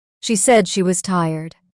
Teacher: Stress said and tired.